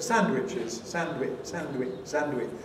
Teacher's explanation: Leaving the D out.